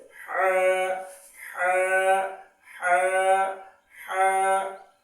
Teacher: হাটা হচ্ছে কণ্ঠনালীর ভিতর থেকে, যেমন এরকম হা, এরকম যে আমরা নিঃশ্বাস ছাড়ি বা এটা একটু যদি চাপ দিই তাহলে হা হা হা হা।